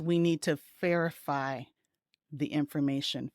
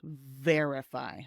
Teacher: the V sound with the vibration, you can feel it on your lip and you can also feel it on your throat